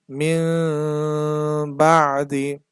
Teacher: দুই ঠোঁট একেবারে মিলানো যাবে না সামান্য পরিমাণ ফাঁকা রাখতে হবে কারণ এখানে তো মূলত মিম নেই এটা নিয়ম অনুসারে এখানে এভাবে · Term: ইকলাব